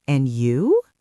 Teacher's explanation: It's not "And you?" It's "And you?" The rising intonation shows you are genuinely interested in the other person. If you don't throw that ball back, the other person feels like they are doing all the work.